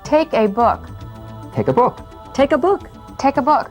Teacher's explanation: unless we need to give stress to these little words we treat the vowels as weak forms